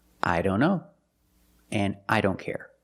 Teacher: Or when we see the word don't. A lot of times the T in don't is silent. Examples I don't know and I don't care.